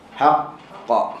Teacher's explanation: bila kita waqaf pada qalqalah yang ada sabdu, huruf qalqalah yang ada sabdu, maka tetap kena bagi bayangan bahawa dekat situ ada dua huruf. Okey, sebab sabdu ini adalah ganti kepada dua huruf.